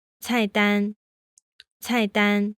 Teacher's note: They shouldn't be the same. The fourth tone should start a little bit higher than the level of your first tone.